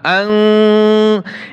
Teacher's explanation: আং এইভাবে দীর্ঘ, আপনাকে গুন্নাটা দীর্ঘ করতে হবে একালিফ পরিমাণ